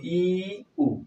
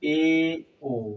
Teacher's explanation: ই উ যখন আমরা উচ্চারণ করি তখন ঠোঁট যতটুকু ফাঁক থাকে এ ও বলার সময় আরো বেশি ফাঁক হয়ে যায়